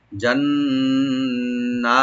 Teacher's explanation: তো জিমটাকে ওপেন করে নুনটাকে আমরা গুন্না, ওয়াজিব গুন্না করে একালিপ টানবো, ওপেন করে জান্না, ইয়ানি গুন্না হবে আবার একালিপ টানো হবে।